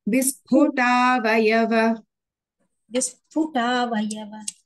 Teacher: Pa is Mahaprana, ta is not Mahaprana.